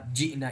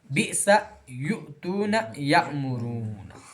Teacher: حمزہ ساکنہ کے پڑھنے میں ہلکا سا جھٹکا ہوتا ہے